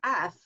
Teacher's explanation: when I make F it's got a little hiss to it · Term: fricatives